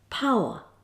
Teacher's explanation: the tongue Glides from an initial to a medial position then it changes direction to a third position